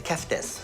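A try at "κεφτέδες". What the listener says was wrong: Keftedes. You missed a syllable. Keftedes. Keftedes.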